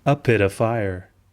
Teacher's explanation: the t sound fades into a d sound